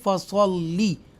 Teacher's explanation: یہ لام مشدہ ہے، ایکسٹرا سٹریس کے ساتھ ہم ادا کریں گے